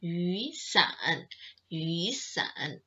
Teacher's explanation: you can't say 雨伞 but you have to make the 雨 sounds like a second one